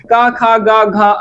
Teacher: क ख ग घ अंग का उच्चारण स्थान कंठ है